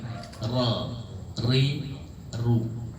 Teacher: jadi sedikit getarannya gak boleh banyak · Ra-nya tebal. Ra itu punggung lidah bertemu dengan langit-langit atas bagian depan. Jadi bukan ujung lidah.